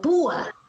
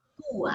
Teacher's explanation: ¿Dónde está la fuerza de voz? En la U, ¿cierto?